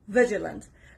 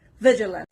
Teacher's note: The stress is on the first part, on the letter V, vigilant.